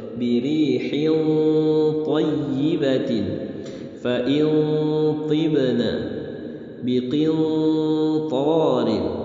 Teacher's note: Karena ta huruf isti'la jadi samarnya tebal.